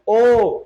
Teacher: মুখটা গোল হচ্ছে গোল হলে হয় সংবৃত